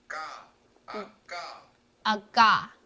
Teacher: it's the K sound in English, ski, similar to a G